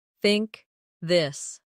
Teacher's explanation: In words like think or this, the tongue comes gently between the teeth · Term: th sound